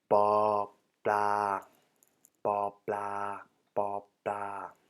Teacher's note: The tones are for the consonant itself ba, a neutral or middle tone, and for the marker word bla, also a neutral or middle tone